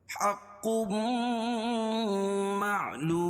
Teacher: اموالہم حق اور قاف پر تشدید ہے اور قاف حروف مستعلیہ میں سے ہے. اس کو موٹا پڑھیں گے.